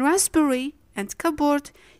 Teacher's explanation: you'll notice the bilabial sounds P, B are following each other. As there is too much maneuver at the level of the lips in producing the two sounds successively, the result is that P files behind from pronunciation and turns into a silent letter. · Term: silent P